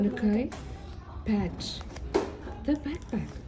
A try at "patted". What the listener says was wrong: patted the Patted. No, patted. It says patted. Patted the backpack. You said pat.